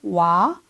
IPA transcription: wa